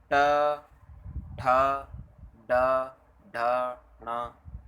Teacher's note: जीभ के पतले भाग और तालु के अगले भाग अगले भाग अगले भाग के स्पर्श से बोले जाने वाले व्यंजन मूर्धन्य व्यंजन कहलाते हैं। · ये बोलने में मतलब एक जीभ के स्पर्श से और मूर्धा के पतले वाले भाग से बोले जाते हैं